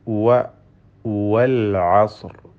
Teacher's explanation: ഹുറൂഫുൽ ഹൽക്കിൽ പെട്ട തൊണ്ടയിൽ നിന്നും ഉത്ഭവിക്കുന്ന അക്ഷരമാണ് വസത്തുൽ ഹൽഖ തൊണ്ടയുടെ മധ്യമാണ്